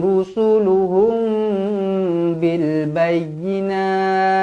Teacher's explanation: mim kosong bertemu dengan ba Ikhfa Syafawi dengung dua harakat